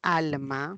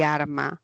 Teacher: un fonema lateral y un fonema vibrante